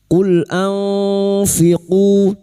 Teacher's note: Nun sukun dibaca samar dan mendengung selama 3 harokat. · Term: ikhfa hakiki